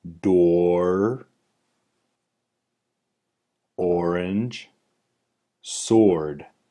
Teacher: Rather, it stays on either the ah or it travels to the right of the target up towards the oo button. The vocalic R or should transition from open O to R.